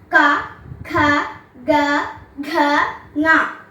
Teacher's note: കവർഗ്ഗം കഠത്തിൽ നിന്ന് ഉച്ചരിക്കുന്നത് കൊണ്ട് കഠ്യം